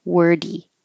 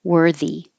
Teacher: there should be a longer delay when you make the th because now your tongue has to go between the teeth